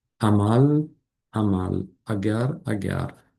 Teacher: soʻz boshida kelganda ochiqroq, kengroq talaffuz qilinadi